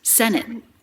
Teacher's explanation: That might sound to you like the T is dropped, but it's not totally dropped because we do stop the air.